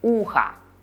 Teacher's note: when we say ухо, we hear a at the end because o is not stressed. But you have to pay attention to not what we hear, but to how we spell it.